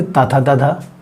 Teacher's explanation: ता को आप जब भी बोलेंगे तो आपकी जीभ ऊपर वाले दांतों के पीछे जाके टच होती है, यानी कि दांतों में टच होती है, तो उन्हें हम क्या कहते हैं, दंत व्यंजन।